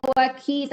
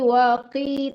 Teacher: Kalau kasrah itu jangan waki tapi waqi, tetap tebal ya Bu.